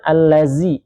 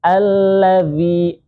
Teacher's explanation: Punggung ujung lidah yang menempel ke ujung gigi seri atas, zi. Alladzi, alladzi, zi-nya kemudian dua harokat.